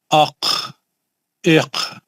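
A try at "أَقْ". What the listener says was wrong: نہیں غلط. خلخلہ کیوں کر رہے ہیں؟ میں لمبا کرو بول رہا ہوں، خلخلہ کر رہے ہیں.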